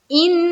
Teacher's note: اس کے بعد ان، نون کے اوپر شد ہے تو نون مشدد کا غنہ کریں گے